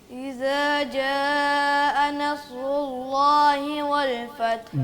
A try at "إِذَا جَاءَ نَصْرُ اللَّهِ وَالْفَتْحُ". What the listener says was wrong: جا پہ تھوڑی مد کر کے پڑھیں.